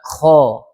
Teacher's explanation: kha termasuk huruf isti'la. Dia harus dibaca tebal, bukan kha.